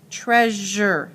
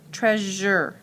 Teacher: the syllable is usually unaccented and has the zher sound, as in treasure